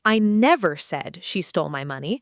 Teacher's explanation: Stress on I means someone else said it, not me.